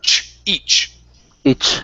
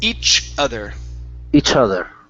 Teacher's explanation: So you're saying each other instead of sh. It's ch. So it's stopping that air.